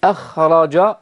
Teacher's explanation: الراء هنا مفخمة وليست مرققة